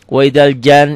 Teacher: cara bacanya dibaca dobel karena ada pendobelnya. Dibaca dengung ke hidung ada gunnah. Ada madnya, ada panjangnya.